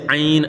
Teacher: عین میں مد لین لازم، اس کی مقدار 5 الف ہے